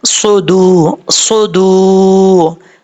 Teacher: واو مدہ ایک الف کی مقدار لمبا کر کے پڑھیں گے · پڑا جائے گا، صاد پہ سو، دال پیش واو، دو سدو، دال کا مخرج ہے زبان کی نوک اوپر والے دانتوں کی جڑوں سے لگے تو دال پڑھا جاتا ہے ، سدو سدو، واو مدہ ایک الف کی مقدار لمبا کر